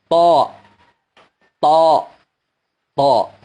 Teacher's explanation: Di mana makhrajnya? Yaitu ujung lidah menyentuh pangkal gigi seri atas kita. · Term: huruf ta